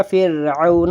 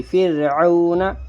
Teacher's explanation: اس را ساکن سے پہلے زیر ہے تو یہ پڑھا جائے گا فرعون، را باریک ہوگی